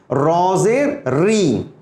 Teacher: جب میں را کہوں گا، را تو را کہوں گا، جب را کہوں گا منہ گول ہوگا. جب زیر پڑھوں گا را کے ساتھ تو منہ دیکھیے فلیٹ ہو جائے گا یعنی حرف باریک ہو جائے گا. را زیر ری, دیکھ رہے ہیں آپ, را زیر ری, جب زیر کسی بھی حرف پہ آتا ہے اس حرف کو باریک پڑھا جائے گا.